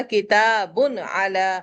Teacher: اب تنوین کے بعد عین آ گیا تو غنہ الاؤ نہیں ہوگا۔ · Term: اظہار